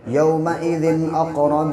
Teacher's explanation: یہاں دو زیر کی تنوین ہے، آگے حمزہ ہے، حمزہ حروف حلقی کے 6 حرفوں میں سے، اس لیے یہاں پہ ناک میں آواز کو ٹھہرائیں گے نہیں، اظہار کر کے پڑھیں گے